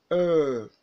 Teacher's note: It is a central, half-closed, tense, and unrounded vowel, ER. The mouth is nearly closed, while the lips are compressed and protruded. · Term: ER vowel sound